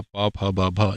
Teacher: पा, फा, बा, भा ये ओष्ठ ध्वनियां हैं